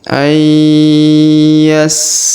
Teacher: Huruf nun sukun bertemu ya, maka ditahan dan ditekan. Ya, huruf nun sukunnya menghilang melebur ke huruf ya